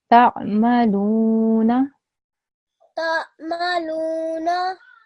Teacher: Yes, so I have to make sure that I only make the letter of lam long, because the lam, after the lam, there is a haruf madda, which is the vowel, okay? So only the lam should be long for 2 seconds